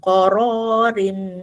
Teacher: Masukkan tanwin ke dalam mim. Okey dengung dua harakat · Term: idgham maal ghunnah